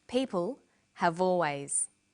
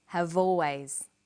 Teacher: Notice how in conversation we link the final consonant sound v with the initial vowel sound or.